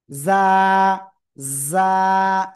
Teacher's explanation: জিহ্বার আগা সামনে নিচে দুই দাঁতের পেট ও আগার সাথে লাগাবো।